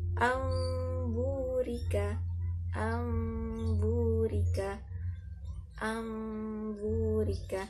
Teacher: Jadi ada dengungnya, kemudian suara nun berubah menjadi suara mim ya, diganti. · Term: iqlab